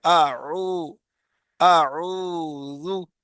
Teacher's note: واو مدہ ہے، واو ساکن ہے، اس سے پہلے پیش ہے، تو یہ واو مدہ ہے، اور یہ بھی خالی حصے سے نکل رہا ہے، منہ کے خالی حصے سے۔ اعو، اعو، اس میں دیکھو منہ کھل رہا ہے، منہ سے آواز نکل رہی ہے، اعو، اعوذ۔